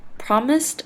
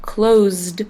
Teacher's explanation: and closed have an s before the e d ending however promised has an s sound and closed has a z sound